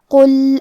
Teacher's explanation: کلمت قل میں قاف کی ادائیگی زبان کے جڑ اور تالو کے نرم حصے سے ہے. قاف حروف التفخیم میں سے ہے تو ہم یہ حرفے کو موٹی آواز میں پڑھیں گے